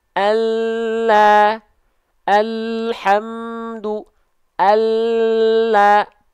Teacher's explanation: huruf lam itu dilafalkan dari samping lidah tapi bukan seluruhnya samping lidah yang kanan tapi bagian depan samping lidah